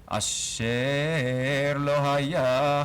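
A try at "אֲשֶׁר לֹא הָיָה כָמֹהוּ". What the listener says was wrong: chamohu. Let's try that again. It's a little bit lower, mapak there.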